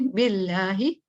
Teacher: باللہ پیچھے زیر آتا ہے تو ہم لائٹ پڑھتے ہیں